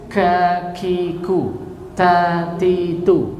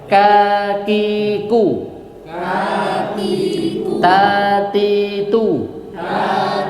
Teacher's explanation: kaf dan ta ini memiliki dua karakter sifat yang berbeda, syiddah dan ha hames. Ya, karena syiddah itu lebih kuat daripada hames, maka dimenangkan sifat syiddahnya daripada hamesnya. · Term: desis